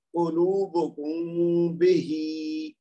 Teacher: میم کو غنہ کے ساتھ 2 حرکت دیتے ہوئے آواز کو چھپایا ہے۔ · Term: اخفاء شفوی